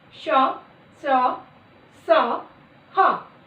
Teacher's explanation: जिन व्यंजनों के उच्चारण में हवा मुख से रगड़ती हुई बाहर निकलती है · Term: ऊष्म व्यंजन